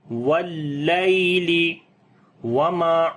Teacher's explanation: میم کو لمبا کریں گے، الف مدہ ہے